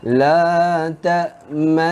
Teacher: Hukum ishmam ni kita kena muncungkan dua bibir serta dengung dua harakat.